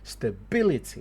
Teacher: So in English you'd say stability, weak, strong, weak, weak.